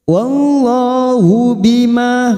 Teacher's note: Wallah lam jalalah kita baca tafkhim karena sebelumnya fathah